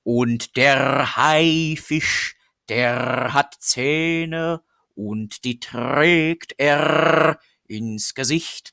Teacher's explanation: It's a very strong rolled R.